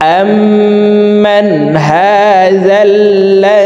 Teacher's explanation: এই হামজা তাসদিদওয়ালা মিমের সাথে 3 সেকেন্ড পরিমাণ গুন্নাহ করে পড়ব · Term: ওয়াজিব গুন্নাহ